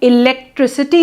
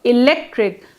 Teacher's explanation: For example, in the word electric, when pronounced in isolation, the sound k, electric, comes in the final. But when the suffix ity is added, the resulting electricity is pronounced with s, electricity, and not with k. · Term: internal sandhi